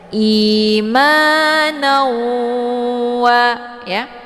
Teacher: Cara bacanya didengungkan. Jadi tanwinnya dimasukkan ke dalam waw dengan cara ditekan sambil ditahan sehingga terbentuk suara yang mendengung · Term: idgham bi gunnah